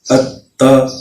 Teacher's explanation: تو یہ ہم نے پڑھا جی، حمزہ زبر تا ات، تا زبر تا ات تا، یعنی حمزہ کا جو پریشر ہے وہ ہم تا کے اوپر ڈال کے اس کو دباؤ کے ساتھ پڑھیں گے۔ اس کو تشدید کا جو پڑھنے کا صحیح طریقہ ہے وہ یہی ہے۔